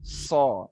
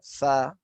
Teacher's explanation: Hanya So. saja dia ditebalkan atau diitbakkan so. Ya, bentuk daripada lisan ini sama di ujungnya ya.